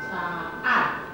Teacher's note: 两个母音中间是比较轻的喉塞音